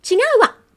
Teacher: that small tsu at the end in katakana, what that's doing is it's adding a glottal stop